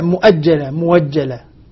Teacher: وبعد الضم يسمع واوا مبدلة من الهمزة